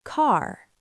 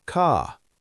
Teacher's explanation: in many American accents, the R is strong. In many British accents, especially southern British, the R is softer or disappears at the end. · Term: the R sound